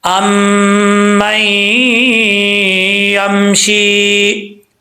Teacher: یہاں ادغام یرملون ہو رہا ہے, ایک الف کی مقدار غنہ کیا جائے گا